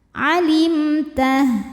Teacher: selain mim dan ba di sini hurufnya adalah huruf Ta Maka mim sukun dibunyikan dengan m yang jelas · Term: izhar syafawi